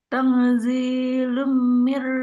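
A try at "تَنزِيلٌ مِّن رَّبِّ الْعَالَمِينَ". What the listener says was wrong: Agak dilamain. Tanzilum. Agak dilamain. Panjangin. Tanzilum.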